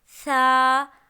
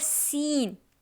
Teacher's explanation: सा है नरमी वाला लफ्ज़ जिस पे सीटी नहीं होती, और सीन है सीटी वाला और सख्ती वाला लफ्ज़, सीन, ठीक है।